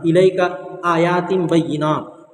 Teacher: حروف مدہ کے بعد حمزہ دوسرے کلمے میں، اس کے مد منفصل ہو، مد منفصل کو کم سے کم 3 الف کے برابر آپ کو کھینچ کر پڑھنا.